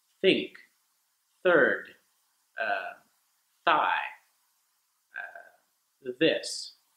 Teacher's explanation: you start with your tongue in the middle of your teeth and then it goes back while a puff of air goes forward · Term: the th sound